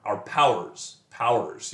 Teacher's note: if you read it fast enough it's just one syllable